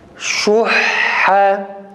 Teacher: şeddeli ha cezimli ha'dan daha mübalağalı, daha tok bir sesle çıkması gerekir